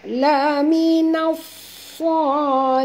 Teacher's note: Laminas, nah, tebal, ya, tuan-tuan, jangan baca laminas. Kalau baca laminas jadi sin, ini huruf sad, jadi kena tebal, ya. Laminas salihin, ha sini ha pedas, jangan tebal, ya.